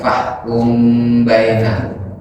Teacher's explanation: Kalau safawi maksudnya bangsa bibir, bangsa lambi, karena keluarnya dari kedua bibir. Maka cara membacanya mungkin dengan berdengung dan dengan kedua bibir yang merapat, tidak sedikit merenggang. Jadi mengurangi tekanan makhrajnya. · dia dengung tapi tidak langsung masuk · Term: ikhfa safawi